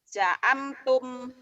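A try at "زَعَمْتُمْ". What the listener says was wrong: Zai agak rapuh ya. Za'amtum. Zai. Zai. Za'amtum. Za'amtum.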